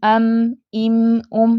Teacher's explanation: इसकी आवाज़ सख्ती और नरमी के दरमियान की है, ना तो ये ज़्यादा सख्त है और ना ज़्यादा नरम है, सख्ती और नरमी के दरमियान की है। मीम की अदायगी में फितरी हल्का गुन्ना भी है, ठीक है, इसकी आवाज़ में जमाव है, झटका नहीं है।